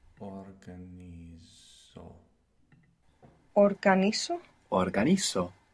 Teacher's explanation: We are taking off our ar, or ir, and we are adding o to get the I version. We are also accenting the penultimate syllable, the syllable that comes before the last.